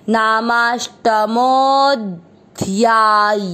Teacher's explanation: नामाष्टमो, क्योंकि नाम और अष्टमो ये दो शब्द दोनों मिलके नामाष्टमो, मो के बाद में अवग्रह, मो की मात्रा को लंबा खींचेंगे